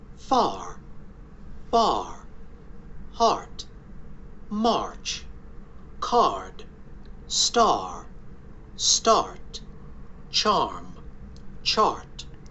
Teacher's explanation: So if you're not in the UK, in North America, you will hear the R there. All of these R's are not silent.